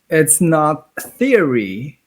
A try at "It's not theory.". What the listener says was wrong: Your its and your its and not are blending together a lot.